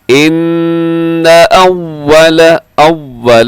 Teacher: اکثر اسے کیا ہوتا ہے کہ ان اول ایسے ہو جاتا ہے، تو آپ نے غنہ کرنا ہے اس کو، لیکن لمبا نہیں کرنا، اس کو کھینچنا نہیں ہے۔ غنہ اس لیے کرنا ہے کیونکہ نون کے اوپر شد ہے